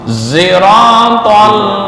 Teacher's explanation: Ismam maksudnya bukan mengganti ya, membaca shad itu antara shad dan za. · zira bukan za campuran antara za dan sad. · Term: Ismam di shad